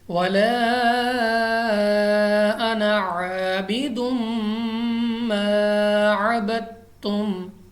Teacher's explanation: اس کے بعد الف مدہ، الف سے پہلے زبر، الف مدہ، اور میم مشدد غنہ کر کے پڑھیں گے۔ عین کو مخرج سے ادا کرنا ہے، الف کے ساتھ ہرگز چینج نہیں کرنا